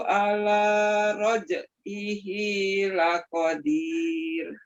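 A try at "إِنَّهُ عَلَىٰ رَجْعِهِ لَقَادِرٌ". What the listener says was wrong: Nah, di innahunya panjang 2 harakat. Innahu ala raj'ihi laqadir.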